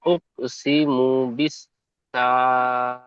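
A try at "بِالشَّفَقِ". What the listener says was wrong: আর বিশ সাফা কি বলছেন এখানে শিন রয়েছে, শিন অক্ষরটি সিন উচ্চারণ হয়ে যাচ্ছে। বা সিনজের বিশ সিন যাবার সা বিশ সা ফা কব যাবার ফাক, এই বিশ সাফাক রয়েছে, এখানে সাফা কি হয়ে যাচ্ছে। উকসিমু বিশ সাফাক বিশ সাফাক ফা টান হবে না, ফা কব যাবার ফাক, বিশ সাফাক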